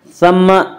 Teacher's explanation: سا کو نرمی کے ساتھ پڑھیں گے، سا کا مخرج زبان نوک اور ثنایا الیاء کا کنارہ